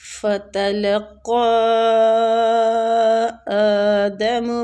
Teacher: فَتَلَقَّىٰ، یہ مد جو قاف پہ مد ہو رہی ہے نا، مد جائز منفصل ہو رہی ہے کیونکہ حروف مدہ کے بعد اگلے کلمہ میں حمزہ آ رہا ہے